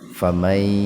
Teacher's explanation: Jadi nunnya diidghamkan ke ya, dimasukkan ke ya dengan mendengung. Tahan dua ketukan biar terdengar mendengung. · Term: idgham bigunna